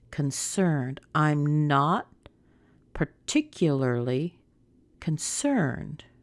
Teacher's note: stress it's concerned isn't it that's the most important word so we start small we get a little bit higher and then we go up to the CERN part and then we drop back down again